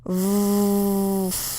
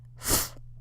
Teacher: f f is voiceless and it's the voiceless pair with v they're the same sound but one uses the voice and one doesn't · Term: voiced voiceless pair